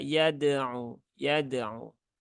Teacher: Dal sukun ya dia qalqalah maka dibaca dengan sewajarnya. Jangan dijeda ya, jangan yad'u ya.